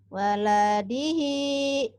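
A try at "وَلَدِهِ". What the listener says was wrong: Panjangnya ujungnya doang. Waladihi.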